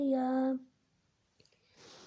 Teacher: یا کو 1 الف کے بقدر کھینچ کر پڑھیں گے، جیسے یا۔ یہ حروف ہجا کی تختی تھی جس میں آپ کو کھینچنے کا بتایا۔